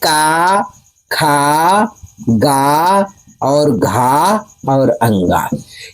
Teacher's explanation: क वर्ग का उच्चारण स्थान कंठ होता है